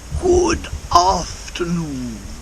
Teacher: afternoon I've joined the D to the a in afternoon but he separates them and he puts a bit of extra stress on the D at the end of good